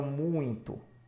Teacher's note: a letra mais importante aqui vai ser a vogal no caso o u é é a vogal e o i é a semivogal